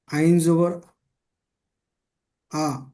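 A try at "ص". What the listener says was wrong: আইন নয়, এটা সদ জবর স।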